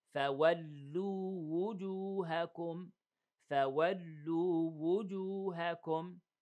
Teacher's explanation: Okay, so we want to make sure that we pronounce the wow as a vowel and then the wow as a regular letter, not as a vowel